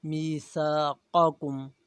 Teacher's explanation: پہلا قاف جو ہے نقطوں والا موٹا قاف ہے، دوسرا باریک ہے۔ میثاقکم، نقطے والے جو قاف ہے موٹا قاف ہے، اسے موٹا پڑھا جائے گا، اور دوسرا جو قاف ہے یہ باریک ہے، اسے باریک پڑھا جائے گا۔